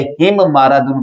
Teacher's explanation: یہ پہلے والی میم دراصل دوسری میم کے اندر مدغم ہو گئی ہے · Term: غنہ